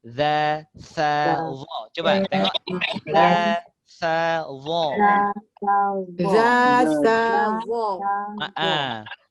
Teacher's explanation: Sama-sama dari ujung lidah berjumpa dengan gigi kacip atas. Ujung gigi.